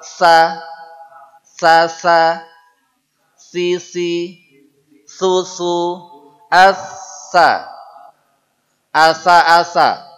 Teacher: caranya adalah mengucapkan es biasa hanya posisi lidahnya naik ke atas saa niatnya bilang sa tapi lidahnya na naik coba saa Sasa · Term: tsa